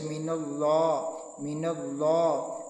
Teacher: اور جو غنہ آنی ہے وہ جلدی میں ادا ہو جاتا ہے۔ جو غنہ زمانی ہے اس کی آواز کو ہم 2 سے 3 سیکنڈ تک ناک کے بانسے سے گھما کر نکالتے ہیں، اور 1 الف کے برابر ہم نون اور میم کی آواز کو لمبا کرتے ہیں، اور پھر نون اور میم کے اوپر غنہ ہوتا ہے۔